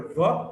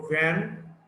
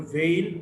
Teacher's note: But the V, the voiced labiodental fricative. V as the word van, or in the veil, or in th is a voiceless dental fricative.